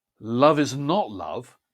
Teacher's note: love is not love builds to not and then drops off at the end